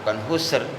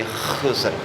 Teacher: Khusr itu kha itu. Jadi ada ka-nya, khusr. Bukan ha, bukan husr, tapi khusr.